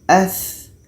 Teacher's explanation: Tha ini letaknya pada ujung lidah menempel dengan ujung gigi seri atas. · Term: rokhawah